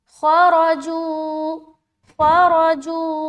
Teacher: آگے خرجو، خارا دونوں موٹا، خا حروف مستعلیہ کے اندر آتا ہے اس لیے موٹا، را کے اوپر زبر ہے اس لیے موٹا